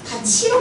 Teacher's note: 없어요? 실질적 의미가 없는 이랑 만나게 되면은 이 티읕을 뭐로 발음한다? 치읒으로 발음한다. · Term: 구개음화